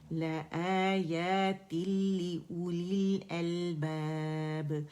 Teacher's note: یہاں پہ ہمارے پاس ادغام تام بلا غنہ یعنی ادغام بغیر غنہ ہونا ہے، مکمل ہے ادغام لیکن غنے کے بغیر